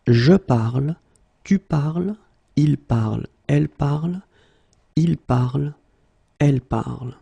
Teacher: So it does mean that even if you write them differently, es, and then ent, you will pronounce them the same way